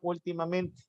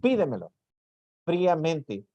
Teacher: tiene la mayor intensidad en la anterior a la antepenúltima